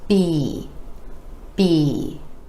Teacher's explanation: Our lips come together for the b sound and go into the vowel E.